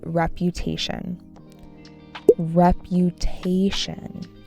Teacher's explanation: Emphasis on the third syllable